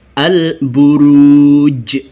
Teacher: Dan membacanya dibaca dengan memantul. Memantulnya terasa karena kubro, besar. Al-Buruj. Seolah-olah berbunyi seperti itu. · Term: qalqalah kubro